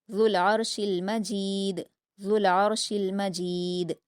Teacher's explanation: ذال کے مخرج کو نرمی سے ادا کریں گے، لام سے ملا کر پڑھیں گے